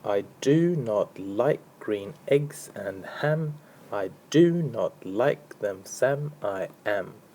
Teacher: this particular example is iambic because the first syllable I is unstressed and the do is stressed. So it's an unstressed followed by a stressed syllable.